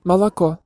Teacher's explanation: unstressed a and o become ɐ or ə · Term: vowel reduction